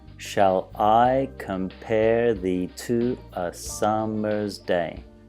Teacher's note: Now the way the stress is, it's on every second syllable. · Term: iambic pentameter